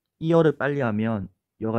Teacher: 그래서 이, 아, 야 이렇게 빨리 가면서 난다는 걸 알 수가 있습니다. 다음으로 여를 보면 여도 마찬가지로 반모음 J에서 어로 가면서 난다는 걸 알 수 있습니다.